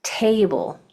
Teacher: If whatever syllable has the accent, that's the syllable that you say more strong, like table, the first syllable is accented